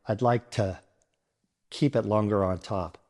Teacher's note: To becomes tuh, and a turns into uh.